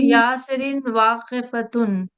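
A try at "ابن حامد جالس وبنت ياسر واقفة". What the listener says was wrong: बहुत अच्छा।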